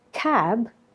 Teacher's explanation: the k is aspirated and the vowel is lengthened because of the voice sound at the end is a systematic regularity of the language.